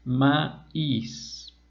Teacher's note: como está acentuada, rompemos el diptongo y quedan en dos sílabas separadas.